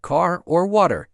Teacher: The pronunciation, particularly the rhotic R where you pronounce the R at the end of words like car or water, is a key difference.